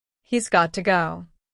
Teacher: Listen to got to becoming gotta.